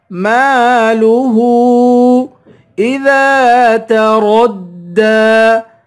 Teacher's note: مقدار کھینچ کر پڑھیں گے، ہا پر الٹا پیش ہے اور ہا پر مد ہے، اس مد کو تین الف کی مقدار کھینچ کر پڑھتے ہیں